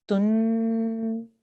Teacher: you have to hold on the nasal sound for 2 seconds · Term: noon gunna